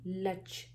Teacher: There's n sound. Make sure you don't forget the n, slight n sound blending with ch.